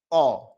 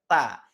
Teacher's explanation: Ketika berharokat fathah, suaranya akan condong pada suara vokal A. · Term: istifal